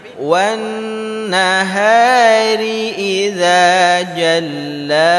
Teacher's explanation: sini di ayat ke-3 kita berjumpa dengan huruf nun yang bertasydid Nun yang bertasydid maka bacaan dengungnya itu harus lama